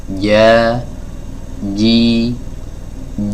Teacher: dari lidah bagian tengah bertemu dengan langit-langit atas bagian tengah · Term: huruf Jim